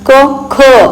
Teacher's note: क हा आहे अल्पप्राण ख क प्लस ह त्याच्यात उच्चार येतो ना क ख चा उच्चार येतो म्हणून तो ख झाला महाप्राण